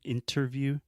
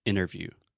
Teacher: If you really want to sound American, this probably doesn't work for British English, but in general, when we say interviews, I do not pronounce the T.